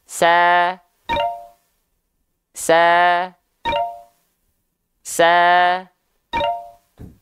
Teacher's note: termasuk ke dalam huruf yang tipis maka dilafalkan sama buka mulutnya sambil senyum sama Jadi bukan hanya sekedar sa sa sa tapi teman-teman lafalkan